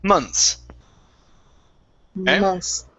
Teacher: forget all about the TH when it's pluralized